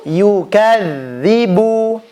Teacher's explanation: ketika mengucapkan huruf dzal, usahakan ujung lidahnya jangan ditekan kepada ujung gigi seri atas. Ya, jangan ditekan.